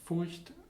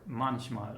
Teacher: this sh allophone occurs after consonants. For example, in the word Furcht, which means fear, or manchmal, which means sometimes.